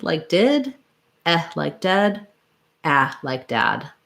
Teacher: My jaw is just a little more open and my tongue is lower for each one. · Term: lax front vowels